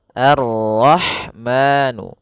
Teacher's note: Pada bacaan Ar-Rahman, di sini ada alif lam syamsiyah, yaitu alif lam yang ditulis tapi ia tidak dibaca, sehingga kita langsung masuk ke huruf ra